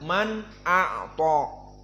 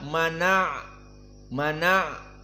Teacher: a Nun Man ao Nun Sakinah dihapuskan hamzahnya dalam keadaan fathah maka fathah dari Hamzah pindah ke Nun menjadi mana dan hamzahnya hilang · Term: annaql